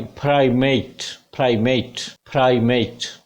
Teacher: ए diphthong, प पे primary stress